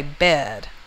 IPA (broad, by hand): bed